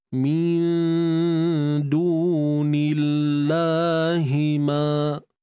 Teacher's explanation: Kalimah Allah ni, tuan-tuan perempuan, kita kena nipiskan. Sebab apa? Sebab sebelum kalimah Allah, terdapat baris bawah, iaitu pada nun tu lah.